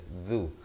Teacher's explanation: zal baris dhammah di hujung lidah